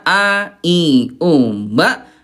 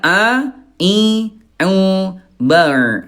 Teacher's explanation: bunda hamzah ya pangkal tenggorokan ya, a, i, u, ba. Nah kalau ain tengah tenggorokan ya